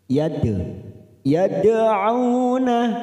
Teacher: Lalu ada huruf Dal sukun namanya Qalqalah sugr karena mati di tengah kalimat cara membacanya kita pantulkan